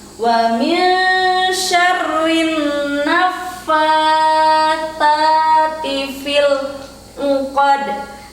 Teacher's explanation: ada hukum bacaan ikhfa saat nun mati bertemu dengan huruf shin. Kemudian harus ditebalkan kembali rohnya syarri karena ada tanda tasydid.